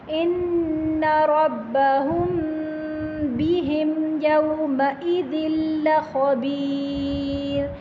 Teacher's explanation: میم ساکن کے بعد با آ رہا ہے، یہاں پر غنہ کر کے پڑھیں گے